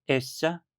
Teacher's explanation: a forma feminina essa, que se abre para essa por conta do A final